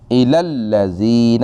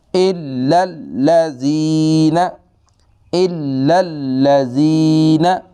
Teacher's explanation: ہم ڈائریکٹ لام کو لام سے ملائیں گے اور اس لام کو لمبا بھی نہیں کریں گے